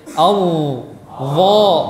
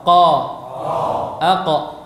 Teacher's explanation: Mana yang terdengar lebih jelas, lebih besar, lebih tebal? Tentu huruf dha. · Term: isti'ala